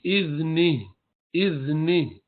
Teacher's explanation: हा निकालना है वरना खाली इज़्नी इज़्नी करते रहे तो वो हा खा गया।